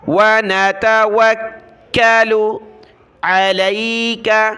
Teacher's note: کاف کو سخت کیا تشدید کی وجہ سے